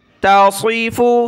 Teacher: چھوٹی تا ہے اور اس کے ساتھ صاد کو موٹا کرنا ہے